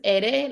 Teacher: The here they have ere, but we know that there's a double R and it's ere, which is like an emphasis on the rolling of the R. So this is ere, like caro.